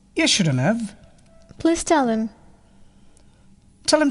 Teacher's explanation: The h sound is also often elided.